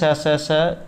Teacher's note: और समघर्षी निःश्वास वायु के निर्गम का मार्ग जीवा के द्वारा अत्यंत संकीर्ण कर दिया जाता है और रगड़ खाती हुई सरप की चित्कार जैसी आवाज़ हमारे मुंह से निकलती है। तो इन्हें आप ऊष्मवर्ण भी कह सकते हैं, स स स।